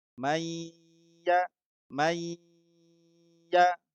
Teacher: Langsung dimasukkan kepada ya-nya, kemudian didengungkan. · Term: idgham bi gunnah